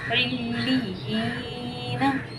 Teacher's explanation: देखें, इस यहाँ पे हमने जमाव करना है और इस यहाँ को खींचना है, क्योंकि यहाँ पे या मद्दा हो रहा है। या सकीन है, उससे पहले ज़ेर है, तो या मद्दा हुआ, इसे हम एक अलिफ़ मिक़दार खींच कर पढ़ेंगे